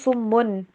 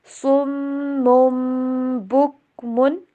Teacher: تو آسانی کے لیے تنوین کے بجائے میم والی آواز لے کے آتے ہیں